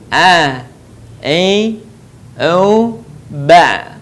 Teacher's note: Berikutnya adalah huruf a. Huruf a keluar dari tengah tenggorokan kita sama dengan cara kita melafalkan huruf ha.